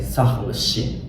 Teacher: su drops out because it's very hard to pronounce three consonants at the same time here